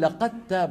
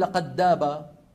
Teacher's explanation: لما بدخل انا الدال في التاء لقد تاب ا بقول لقد تاب ما بقول لقد داب انتبهنا